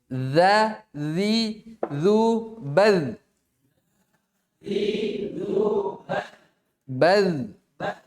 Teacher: ketika disukun jangan sampai muncul desis